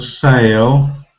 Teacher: a is long and a sounds like in the alphabet a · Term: long vowel sound